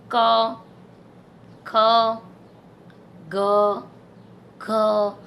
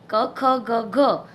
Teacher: ક, ખ, ગ, ઘ આ જે 4 વ્યંજન બોલશો ત્યારે તમારા કંઠ એટલે કે આ જે ગળું છે એ ગળાના ભાગમાં થોડુંક દબાણ આવશે. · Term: કંઠ્ય વ્યંજન